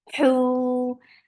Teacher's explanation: Hu for dhamma, circle your lips and make it 2 counts long.